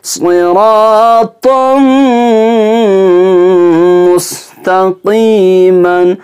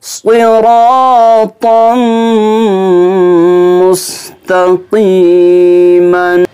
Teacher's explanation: سین کی آواز نہیں نکلنی چاہیے، بلکہ صاد حروف مستعلیہ میں سے ہے، اس کو موٹی آواز سے پڑھنا ہے